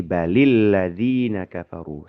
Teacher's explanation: Pertemuan dua sukun ini menyebabkan kata bal di sini itu jadi ngalah sukunnya. Jadi apa kasroh gitu ya.